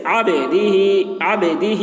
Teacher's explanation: با میں قلقلہ ہوگا، یعنی با کی آواز ڈبل نکلے گی